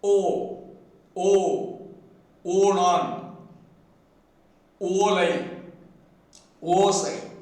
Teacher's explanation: Tamil phoneme O is produced by keeping the lips closely rounded and sounding.